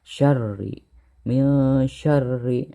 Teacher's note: ada tasydid, maka lapad syarri itu harus ditekan ya. Syarri, min syarri ya.